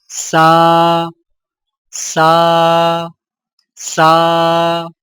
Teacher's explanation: سین سیٹی والی آواز ادائیگی کے وقت زبان کی نوک کو سامنے والے نیچے کے دو دانتوں کے کناروں سے مضبوطی سے لگائیں